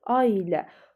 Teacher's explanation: Ailə sözündə isə bəli, y artırılır. A uzanır, y artırılır